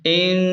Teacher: حمزہ نون زیر ان، نون پر تشدید ہے تو حمزہ کو نون کے ساتھ سختی سے ملائیں اور غنہ بھی کریں